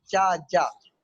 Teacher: चा, जा बोलेंगे तो आपको लगेगा जबान तालू से यानी पैलेटल से टकरा रही है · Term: पैलेटल साउंड